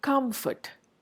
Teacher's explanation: it becomes more of a labiodental sound